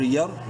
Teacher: را ساکن سے پہلے زبر ہے، را کو منہ بھر کے پڑھیں گے۔